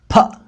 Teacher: अपने मुंह बंद रखकर होंठ मिलाइए, टाइट करिए, उसके बाद जोर की हवा मुंह से छोड़िए तो स्वर निकलेगा फ